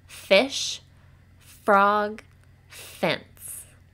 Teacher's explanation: and because it's a continuous sound it can keep going and it's an unvoiced sound because our throats do not vibrate when we make it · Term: letter F sound